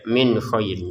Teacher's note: Min khairin nun sukun bertemu k kita baca dengan jelas ya.